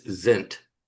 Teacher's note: the S is usually pronounced as a Z sound. Certainly certainly in a leading position anyway.